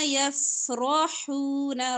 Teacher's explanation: را پر زبر ہے، را کو موٹا پڑھیں گے